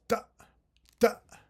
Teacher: in Ethiopic languages, it's a glottalized ejective